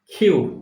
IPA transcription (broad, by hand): kjuː